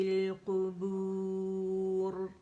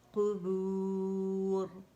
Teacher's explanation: قو موٹا ہے، ٹھیک، کو نہیں پڑھیں گے